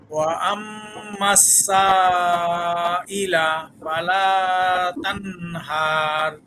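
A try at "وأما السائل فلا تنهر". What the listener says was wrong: আর একটু মনে হয় টান হয়ে গেছে, আর সাথে আর একটু টান হলে আর একটু ভালো হবে।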